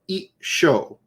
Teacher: you kind of have like a little glottal stop pause and then it's sort of double consonant · You kind of merge the two, and so the chi drops off, and you double consonant the sho. So it's I, shi, o.